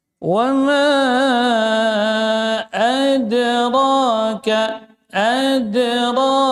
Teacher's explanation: Wama mim tawasud ya panjang. Di sini asalnya dua harakat, tapi karena ketemu dengan hamzah maka menjadi mad jaiz munfasil